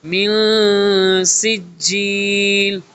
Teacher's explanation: آواز کو چھپانا ہوتا ہے۔ نون کی جو وائس ہوتی ہے، آواز، وہ کلیئر نہیں ریڈ کرتے بلکہ 50-50 ہوتا ہے۔ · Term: اخفا